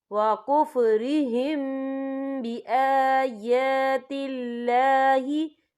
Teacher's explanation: میم ساکن کے بعد جو ہے با آ رہا ہے تو یہاں پر اخفا شفوی ہوگا اور ہم یہاں غنہ بھی کریں گے